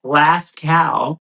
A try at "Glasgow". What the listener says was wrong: No, it's not glass cow. Like it's glass go.